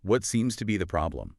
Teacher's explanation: Information question, falling intonation. Direct, but still sounds caring.